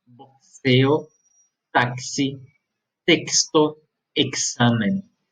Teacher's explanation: Eu pronuncio sempre como se fosse um K e um S, certo? Então aqui eu não vou pronunciar como se fosse S, igual ao português.